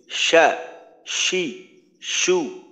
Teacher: শিনের ক্ষেত্রে এটা শিথিল, শা, শি, শু, ইয়া, ই, ইউ। জিহ্বার মধ্যখানটা উপরের তালুর সাথে শক্তভাবে ধরা যাবে না, একটু শিথিল ভাবে ধরতে হবে।